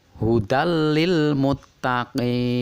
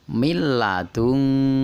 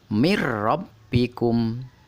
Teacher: meleburkan nun mati atau tanwin ke dalam huruf depannya, yaitu lam dan ro, dengan tanpa berdengung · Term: idgham bila gunah